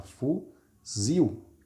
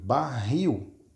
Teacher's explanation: a última sílaba é mais forte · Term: oxítona